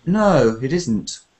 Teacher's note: So when you agree, we have one kind of flat intonation, flatter, not showing surprise.